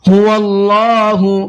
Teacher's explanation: اللہ کے لام کو پر کر کے پڑھنا ہے، اس لیے کہ اللہ کے لام سے پہلے زبر ہے۔